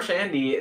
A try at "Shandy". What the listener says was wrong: Why do you pronounce the D on Shandy? I've never heard someone from Wisconsin call it Summer Shandy. Call it Summer Shanny.